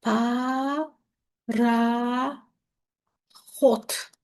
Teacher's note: kar samitlə başlayıb kar samitlə bitir